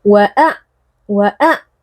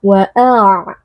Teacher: huruf ain yang sukun merupakan huruf bainiyah, jadi tidak boleh suaranya langsung diputuskan wa'a, wa'a, ya, tapi harus ada aliran suaranya wa'a.